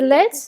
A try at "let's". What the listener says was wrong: let's. Let's, pero no es lex, es let's. Let's.